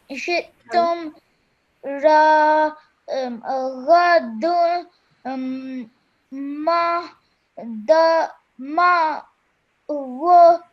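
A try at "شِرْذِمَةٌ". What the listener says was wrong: First of all, when you read the ra, just do it for 1 second. Don't stretch it for longer than 1 second, okay? So Raga.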